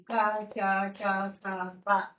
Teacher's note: ఈ క, చ, ట, త, ప అనే ఈ 5 అక్షరాలని పలికేటప్పుడు ఈ స్వరపేటిక దగ్గర ఉన్న 2 తంత్రులు కూడా అసలు ఏమీ కష్టపడవు. అవి వాటి దారిన అవి దూరంగానే ఉంటాయి. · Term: అఘోషములు